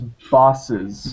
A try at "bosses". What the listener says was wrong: Not a U sound, but an O sound. Bosses.